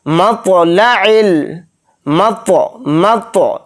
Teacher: طوا کے اوپر جزم ہے تو اس کے اندر قلقلہ کر کے پڑھیں گے ، لام کو جلدی پڑھیں گے، عین کو لام کے اندر · عین کو یہاں پر اچھے سے حلق سے نکال کر ادا کریں گے